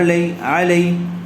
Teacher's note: یا ساکن سے پہلے زبر آیا ہوا ہے، اس لیے لین کا قاعدہ ہوا، اس کو بھی نرمی کے ساتھ جلد ادا کریں گے